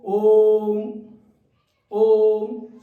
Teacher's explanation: जब प्रार्थना में होते हैं तो ये बोला जाता है ओम तो ओ जो पहली स्वर ध्वनि है उसको लंबा खींचा जाता है और फिर व्यंजन को बोला जाता है इसको बोल के देखो ओम ओम समझ गए और इसे लंबा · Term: प्लुत स्वर